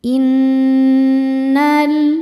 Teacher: Innal nun tasydid dihukumi dhunah musyaddadah karena nunnya bertasydid. Cara bacanya berdengung. Tahan dengungannya kurang lebih dua harakat.